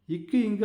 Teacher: நாவின் முதல் பகுதி அன்னத்தின் அடிப்பகுதியை பொருந்துவதால் பிறக்குது